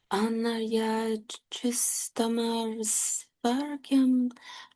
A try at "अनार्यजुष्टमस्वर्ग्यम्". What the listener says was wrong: Okay, it's Jushtam, not Justam.